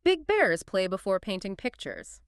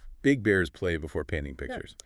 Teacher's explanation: to practice that voiced B and unvoiced P distinction, yeah, >> you could try a phrase like, "Big bears play before painting pictures." >> Say it slowly, focusing on the B vibration and the peuff.